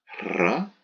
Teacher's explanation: R is trilled, r. The Romans called the R the dog letter.